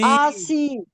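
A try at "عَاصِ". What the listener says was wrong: आ नहीं, असी। खींचे मत।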